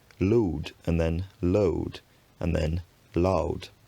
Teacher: Then eventually it becomes voiced, lúd. The great vowel shift causes this vowel to diphthongize